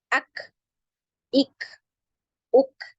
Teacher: ketika di sukun, ya ini suaranya tertahan, kemudian ngalir nafasnya. Ak. Jadi seperti ada suara percikan gitu ya. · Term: hamas